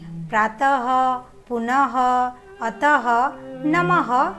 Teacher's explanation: विसर्ग का उच्चारण ह की तरह होता है।